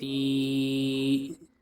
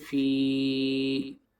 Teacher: دال یا زیر دی، دال یا ساکن سے پہلے زیر ہے اس لیے یا مدہ ہوگی، یا مدہ کو ایک الف کے برابر کھینچ کر پڑھیں گے